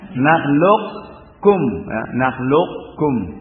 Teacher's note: Nakhluqkum, ke atas dulu baru ke bawah, ya. Mampir dulu ke makhrajnya qaf, baru kemudian turun ke bawah dari makhrajnya kaf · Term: idgham naqis